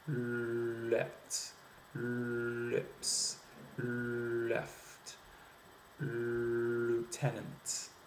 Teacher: You'll notice that the lips are actually going to the oo sound before the L has really been finished. Before the speaker has finished the articulation of the L. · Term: French L